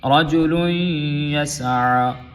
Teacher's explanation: رجل لام دو پیش یا لوئی، یہاں پہ تنوین جو ہے وہ یا میں مکس ہوں گی. تنوین کو یا کے ساتھ ملائیں گے کیونکہ یا مشدد ہے اور یہاں پہ غنہ بھی ہوگا تنوین کا